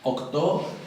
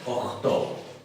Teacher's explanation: Cualquiera de las dos, velar fricativa o velar oclusiva, octo, octo, cualquiera de las dos, está aceptada para el número 8.